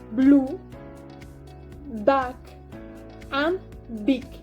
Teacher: the articulations involved in this production are lower and upper lips completely obstructing the air outlet